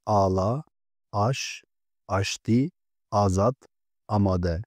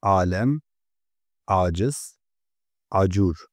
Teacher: Birinci telaffuz Türkçedeki A sesine benzerdir. İkinci telaffuz ise Arapçadaki ayn sesine benzer, boğazdan gelen ağır bir sestir. Bu ses biraz daha gırtlaktan çıkar.